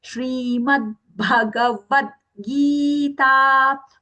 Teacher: When we say Bhagavad Gita, the Bha has to be Mahaprana.